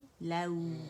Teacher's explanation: complete rolling of the lips